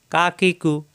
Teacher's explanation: এই কাফের মাখরাজ হলো জিহ্বার গোড়া থেকে একটু আগে বাড়িয়ে স্বাভাবিক উচ্চারণ